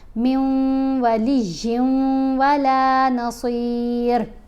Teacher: کے ساتھ ملائیں گے نا تو غنہ کرتے ہوئے ملائیں گے، جیسے میم کو واو سے ملایا غنہ کیا، یا کو واو سے ملایا پھر غنہ کیا